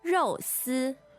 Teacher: 那肉丝 fourth tone and first tone refers to shredded pork in this case.